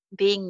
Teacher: Being me, ing sound becomes in